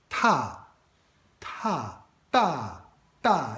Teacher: It sounds like a T without aspiration. Ta. And the T in Pinyin is written T with a little H as a superscript there in International Phonetic Alphabet, which means exactly this aspiration.